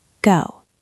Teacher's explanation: Your lips are round at the end.